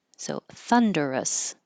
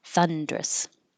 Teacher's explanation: Then this can be 3 syllables, thunderous, or 2 syllables, drop the in the middle and make it thundrous.